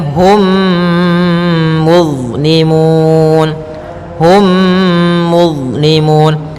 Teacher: Cara membacanya, masukkan mimnya kepada mim setelahnya dan ditahan. Hum, tahan gunnahnya. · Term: idgham mimi